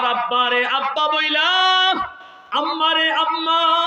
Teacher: এই বা আর মিম উচ্চারণ করতে গেলে দুই ঠোঁট লাগে